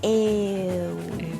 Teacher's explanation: the first vowel is a little bit longer than you would probably expect · get the first vowel e, and then elongate it a little bit, so then it's ew.